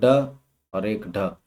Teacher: क्योंकि ये इन्हें जब उच्चारित करते हैं तो उच्चारित करने पर एक झंकार, जो जैसे वीणा के तारों को जब हम पीटते हैं तो उसमें से एक झंकार जैसी उत्पन्न होती है, ऐसे ही जब हम ढ को बोलते हैं तो हमारी जीभ में एक झंकार सी पैदा होती है, तो इनको हम ताड़न जात व्यंजन कहते हैं।